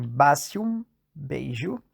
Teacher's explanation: E atenção, aqui serão introduzidos os sons mais palatais, e eles são E, I, Y. O Z, antes de um som mais palatal, como E e Y, virou J, como em basium, beijo. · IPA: [ʒ]